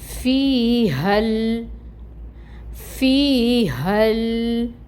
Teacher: اگر آگے ہم آیت میں دیکھیں تو ہمیں جب ملا کے پڑھنا ہے، آگے اس آیت کو لے کر چلنا ہے، تو پھر ہم اس ہا کو اس لام کے ساتھ ملائیں گے، ٹھیک ہے۔ ہا کو لام کے ساتھ ملائیں گے تو یہاں پر الف مد پھر نہیں ہوگی، یہ والی مد پھر ڈراپ ہو جائے گی۔ ہا کو اس لام کے ساتھ ملائیں گے اور لام کو ہلائیں گے نہیں، لام میں توسط ہوگا، لام کو ہلانا نہیں ہے، ٹھیک ہے۔ · فا میں ہمس ہوتی ہے